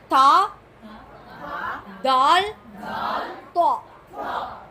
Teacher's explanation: நாவின் நுனி மேல் வரிசை நடுப்பற்களின் ஈரை தொடும்போது ஒலிக்கப் பெறுகின்றன.